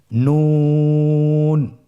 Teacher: নুন হরফটি উচ্চারণের ক্ষেত্রে অবশ্যই পাতলা করে উচ্চারণ করতে হবে এবং 3 আলিফ টেনে পড়তে হবে